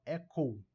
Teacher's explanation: lembra de pronunciar o Uzinho aqui, o U no final